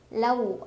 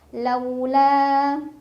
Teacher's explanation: ada huruf Lin karena ada wau sukun sebelumnya fathah dibacanya dilunakan